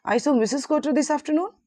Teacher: the rising intonation makes it sound like a question.